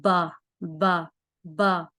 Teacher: با دونوں ہونٹوں کے اندرونی تری والے حصے کو ملانے سے